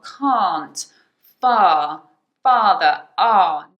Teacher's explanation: so guys in can't it's that long ah